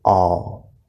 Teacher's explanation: Next we have the word always, and that first syllable all is an L-colored fifth vowel.